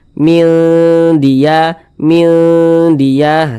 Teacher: jadi suaranya itu kita tahan kita panjang kan sejenak di bagian minnya itu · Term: didengungkan